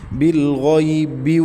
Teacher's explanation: بالغیب بال یہ لام ساکن کو ہلانا نہیں ہے، قلقلہ نہیں کرنا۔ غین حروف مستعلیہ میں سے ہے، پر پڑھیں گے، غین کے بعد یا لین ہے، اس کو بغیر کھینچے پڑھنا ہے۔